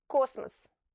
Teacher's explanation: The first O, which is stressed, is clearly pronounced O. And remember, in order to pronounce the stressed vowel properly, you have to say it louder and stretch its pronunciation.